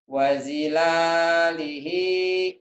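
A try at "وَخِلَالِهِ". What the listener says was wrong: Bukan jim, titiknya di atas. Wakhila, bukan fa. Wakhila. Wakhilalihi.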